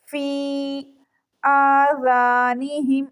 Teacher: آ کو 1 سیکنڈ کے لیے لمبا کریں گے